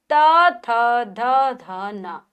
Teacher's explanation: फिर आते हैं त वर्ग, त, थ, ध, ध, न। दांत, जब भी हम इनको बोलते हैं तो हमारी जीभ दांतों को स्पर्श करती है।